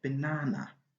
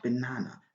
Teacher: in the word banana the stress is on the second syllable